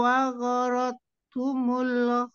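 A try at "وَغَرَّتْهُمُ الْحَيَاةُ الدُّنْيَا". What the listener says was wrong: wa gharrat di tasjidnya ditahan wa gharrat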